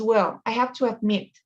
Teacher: cuando hablas rápido, la H ya no se pronuncia como J.